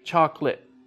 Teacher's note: we don't use all of the syllables with chocolate.